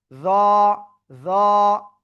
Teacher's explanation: ওই একই জায়গায় জিহ্বার আগা উপরে দিয়ে দাঁতের আগা এরকম লাগবে, লাগিয়ে একটু মোটা আওয়াজে উচ্চারণ করতে হবে।